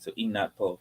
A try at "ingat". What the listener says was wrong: It's not inat, ingat.